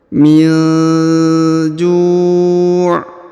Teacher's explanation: kalau mau berhenti, maka huruf ju-nya dipanjangkan, boleh 2, boleh 4, boleh 6 ya. Karena di depannya terdapat waw sukun sebelum huruf pemberhentian ya.